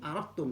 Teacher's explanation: Tapi kalau aradtum, dalnya total hilang, masuk ke tak.